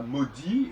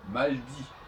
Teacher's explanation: on ne va pas prononcer le l dans un très grand nombre de cas